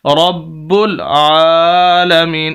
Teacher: اللہ رب را کو با کے ساتھ، با کو پر شد ہے، 2 اصول، 2 مرتبہ با پڑھی جائے گی، سخت کر کے پڑھیں گے، اور با کو پھر آگے لام کے ساتھ ملائیں گے۔